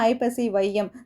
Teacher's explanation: சொல்லின் முதல்ல வந்துச்சுன்னா தனக்குரிய ரெண்டு மாத்திரையில இருந்து அரை மாத்திரை குறைந்து ஒன்றரை மாத்திரை அளவில ஒளிக்கும் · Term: ஐகார குறுக்கம்